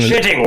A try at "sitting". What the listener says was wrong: The way that the word "sitting" came out with your pipe in your teeth, it sounded a lot more like shitting.